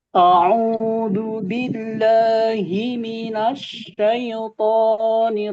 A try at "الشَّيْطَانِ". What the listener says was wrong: kemudian ya-nya jangan ditekan, jangan syaitoni. A'udzu billahi minasyaitonir rajim.